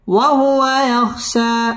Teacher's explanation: এক আলিফ টান দিয়ে ওয়াকফ করতে হবে